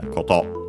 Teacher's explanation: accented on the final syllable, on the last syllable